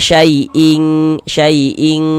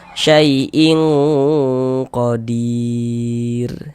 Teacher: huruf qf ini dia termasuk salah satu daripada huruf yang tebal, huruf isti'la. Kalau kita baca syaiing saiing tipis begitu nanti ke huruf kaf dia.